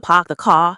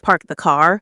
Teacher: if you hear a Boston accent, you might notice they drop the R